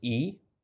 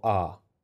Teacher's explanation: is doing to produce these two syllables you might notice that when you say the syllable e the back of your tongue raises a little bit and then when you say a the back of your tongue relaxes down